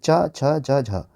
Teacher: जब मुख द्वार को बंद करके इस प्रकार बोलते हैं कि हवा स्थानों को कुछ रगड़ती हुई चलती है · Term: स्पर्शी व संघर्षी व्यंजन